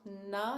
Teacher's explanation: the tip of your tongue is right behind your front teeth on the piece of skin that's close to your 2 front teeth